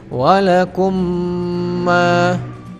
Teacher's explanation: memasukkan bunyi mim sukun ke dalam bunyi mim yang hidup dengan ditahan dua harokat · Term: idgham mimi